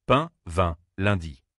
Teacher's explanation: un son entre le i et le e et nasalise-le